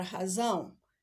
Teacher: eu tenho a pronúncia da vogal A, ela sai pelo nariz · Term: ditongo